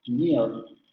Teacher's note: En el inglés norteamericano encontramos el diptongo y luego la vocal es rótica en estas palabras